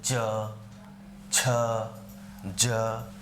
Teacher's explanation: ये तालु से, जिह्वा को तालु से स्पर्श करा के ध्वनि निकाली जाती है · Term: तालव्य